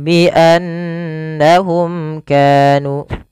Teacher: Kemudian bi annahum kanu, lafal nun berharakat tasydid kita baca dengan bacaan gunnah, memasukkan suara nunnya ke rongga hidung kita dan ditahan. Kesalahannya yang tidak menahan.